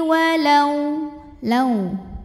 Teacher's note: lau ada huruf lin, sebab ada waw sukun didahului fathah, maka dibacanya lembut atau lunak.